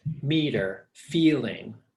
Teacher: the word meter, my voice goes down at the end of the word.